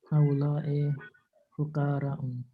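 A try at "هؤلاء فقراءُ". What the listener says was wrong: हाउलाई फ़ुक़राउ, यहाँ आप देखें कि हाँ तनवीन नहीं है। आपने नोटिस की, किसी ने ये चीज़ नोटिस की कि आप देखें ज़ुमलाउ, फ़ुक़राउ, अग़नियाउ, अस्दिक़ाउ, अतिब्बाउ, इसमें तनवीन नहीं है, क्यों?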